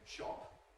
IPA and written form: ʃɒp (shop)